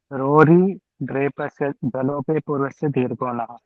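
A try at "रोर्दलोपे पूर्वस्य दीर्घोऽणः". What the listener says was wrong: Rory nahi, only one. Dralope purvasya dirghana.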